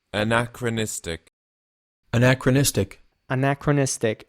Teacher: So the emphasis is actually on the second A here, on this A, anachronistic.